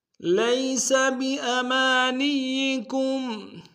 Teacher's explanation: لیس میں یا لین ہے بغیر کھینچے پڑیں گے